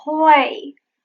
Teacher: What happens is that R and L become voiceless. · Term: voiceless L